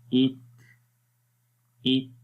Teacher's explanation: سانس آخر میں جاری ہو رہا ہے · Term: हम्स की सिफ्त